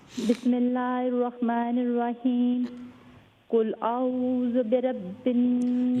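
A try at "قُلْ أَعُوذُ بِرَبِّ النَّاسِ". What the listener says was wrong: یہ دیکھیں آپ نے کہا قل اعوذ برب رب را کے اوپر فتحہ ہے فل ماؤتھ. قل اعوذ برب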